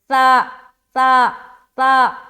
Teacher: सा को हम बगैर सीटी के अदा करेंगे।